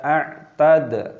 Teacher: Dalnya berharokat sukun, ini dibaca qalqalah, dipantulkan suaranya.